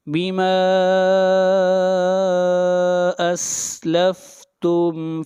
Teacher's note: یہاں پر الف مدہ ہے اور حمزہ دوسرے کلمے میں ہے، اس لیے اس مد کو مد منفصل کہیں گے، اور اس مد کو 3 الف کے برابر کھینچ کر پڑھیں گے. بیما اسلفتم فیل میم کو ظاہر کر کے پڑھیں گے، یہاں پر اظہار ہوگا.